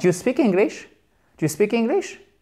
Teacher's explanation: C'est comme do you speak English? Intonation montante.